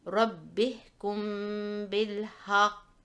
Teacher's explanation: the strong echo when stopping on a qalqalah letter with a shadda